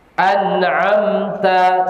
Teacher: An'am tuh jelas nunnya jelas izhar mimnya jelas izhar